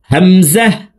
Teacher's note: হামজার উচ্চারণ হলকের শুরু থেকে পড়তে হবে,